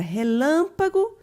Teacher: última posição ela também é uma oxítona e a palavra relâmpago nós temos o lan com uma sílaba mais forte ela está na antepenúltima posição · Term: proparoxítona